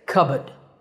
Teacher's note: If you're more into British English, you can drop the R and say cupboard.